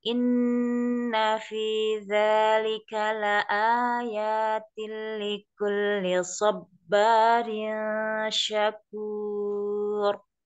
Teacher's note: Inna nun tasdid gunnah musyadada Ya, dibaca dua harokat